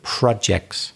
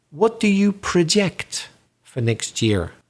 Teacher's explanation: so the vowel sound changes to the schwa sound the uh that really lazy sound when it's a verb what